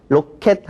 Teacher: 로켓 할 때는 앞에 오는 에가 단 모음이에요 짧은 소리라는 거죠